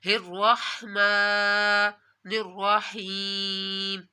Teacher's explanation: را کو موٹا پڑھا جائے گا کیونکہ را کے اوپر زبر ہے · میم کے اوپر کھڑا مد ہے، میم کو بھی آپ نے لمبا کرنا ہے، اور را کو یہاں بھی آپ نے موٹا پڑھنا ہے۔